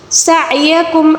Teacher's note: عین کو حلق کے درمیانی حصے سے ادا کریں گے